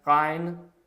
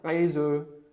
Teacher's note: At the beginning of a word, at the beginning of a syllable or after a consonant, the er is pronounced in a way unlike anything in English. It is slightly rolled.